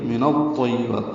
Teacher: نون کو طا سے ملائیں گے، الف لام نہیں پڑھیں گے۔ من الطیبات، طا پر پڑھیں گے، یا سے ملائیں گے، با کو لمبا کریں گے اور تا ساکن پہ حمز ہوگا وقفاً۔